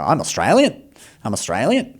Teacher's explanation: even stuff that's not a question, they go up at the end anyway. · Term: the Australian accent